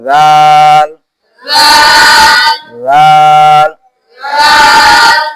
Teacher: জিহ্বার আগা সামনের দুই দাঁতের আগা আগা আগার সঙ্গে লাগিয়ে জাল উচ্চারিত হয়